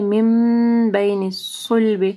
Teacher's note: نون ساکن ہے، اس کے اوپر میم ہے، ٹھیک ہے، اس کے بعد با ہے، اقلاب آ رہا ہے، یہاں پہ غنہ کریں گے